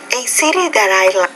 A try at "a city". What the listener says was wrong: First of all, not city, a city. So you're taking that I and making it E. So that's a problem with vowel sounds.